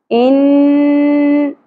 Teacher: غنہ اپلائی ہوگا یعنی کہ اواز کو ہم ٹھہرائیں گے ناک میں ان اس طرح سے اور زبر کو زیادہ نہیں کھینچیں گے